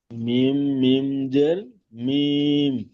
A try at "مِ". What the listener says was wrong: মিম টান হবে না, মিম আওয়াজটি নাকে তুলবেন। মিম টান হয়ে যাচ্ছে, মিম মিম জের মিম, আওয়াজটি নাকে তুলে কিছুক্ষণ ধরে থাকবেন, গুণনা করবেন মিম।